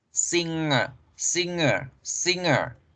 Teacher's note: singer sí se escribe con G, pero en la pronunciación la G se desaparece y se fusiona con la N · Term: N nasal